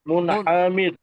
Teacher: র সাকিনের ডানদিকে জের এসছে জেরটা হল বারিক করে করতে হবে >> তাই রকে বারিক করে করতে হবে >> তাই দোয়াকে বারিক করে পড়তে হবে।